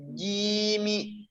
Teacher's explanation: Tengah lidah kita nempel ke langit-langit atas ya